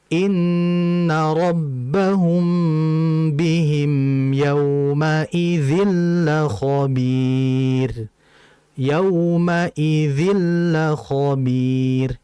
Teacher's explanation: idgham bila gunnah memasukkan tanwin ke lamnya itu jangan ditahan terlalu lama.